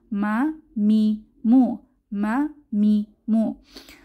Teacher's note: আমাদের শেষ হরফ আজকের মিম, দুই ঠোঁটে শুকনা জায়গা থেকে মিম উচ্চারিত হয়